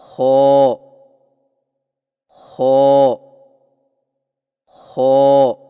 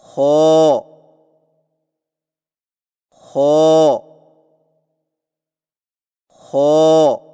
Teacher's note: خو کی ادائیگی میں زبان کی جڑ کو تالو کی طرف بلند کرتے ہوئے موٹی آواز میں پڑھیں